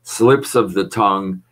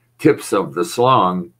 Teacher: consonant blends slips of the tongue tips of the slung and the s l moves to the back and the t from tongue moves to the front